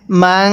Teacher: এই নুন সাকিনের মধ্যে আমরা গুন্নাহ করব। স্মরণ রাখবেন নুন সাকিনের পরে যদি ইকফার 15 টি যে হরফ আছে এই 15 টি হরফ থেকে কোন একটি হরফ এই নুন সাকিনের পরে থাকে তাহলে ওই নুন সাকিনটা আমাদের গুনাহ করে পড়তে হবে।